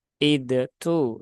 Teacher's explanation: kesalahannya ada di huruf Dal yang mana dalalnya terpantulkan untuk mengucapkan huruf ta